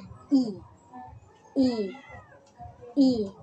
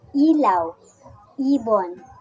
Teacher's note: Ang posisyon ng ating dila sa ponemang I ay nasa mataas at ang bahagi naman ng ating dila ay nasa harap.